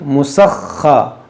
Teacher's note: تا 2 زیر 3، مسخرات. دیکھیے خا جو ہے حروف مستعلیہ ہے اور مشدد ہے، اس کو پڑھیں گے 2 بار، ایک بار سین سے ملائیں گے، ایک بار خود اس کی حرکت کے مطابق، مسخا.